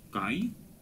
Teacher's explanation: Ай это опять-таки дифтонг, поэтому я, видите, и кратко произношу, и нисходящее ударение, потому что падает на последний слог.